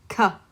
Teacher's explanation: K uses the back of your tongue. It doesn't use the middle or the front of your tongue. It's in your throat. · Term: moon letter